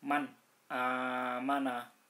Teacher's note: nun sukun bertemu dengan Hamzah maka dibaca jelas terang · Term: izhar halqi